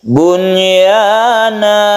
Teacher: Nun bertemu dengan huruf idgham biguna dalam satu kalimat. Bunyana, tidak perlu didengungkan dan tidak perlu dimasukkan ke ya, ditasydidkan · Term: idhar wajib